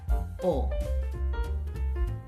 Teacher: Like the o in go and so, but keep it short and clean without the W sound at the end